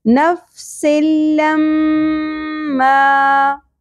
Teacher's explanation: لما مشدد غنہ ہوگا اور الف حرف مدہ ہے ایک الف کے برابر کھینچنا ہے